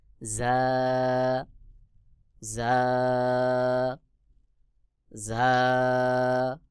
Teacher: জিহ্বার আগা সামনের নিচের 2 দাঁতের পেট ও আগার সঙ্গে লাগাইয়া ঝা উচ্চারণ হবে